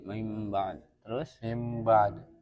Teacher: nun sukun atau tanwinnya dirubah menjadi mim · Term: iqlab